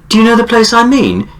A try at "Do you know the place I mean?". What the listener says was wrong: I mean, that's too long for a filler word. Even the longer filler words, they're pronounced so quickly. So that was sort of like that's a filler word, but it's pronounced quickly.